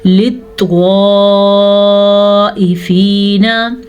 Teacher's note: ये मत तकरीबन 4 से 5 सेकंड तक लंबी की जाने वाली मद है, ठीक है। इसकी मिकदार 5 हरकात अरबिया है।